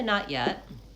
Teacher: I typically don't use an aspirated T